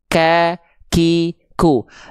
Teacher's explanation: Sehingga kalau huruf kaf dia mengalirkan nafas. Dia punya sifat hams, dia mengalirkan nafas dengan karakteristik bukan mengalir tapi percikan.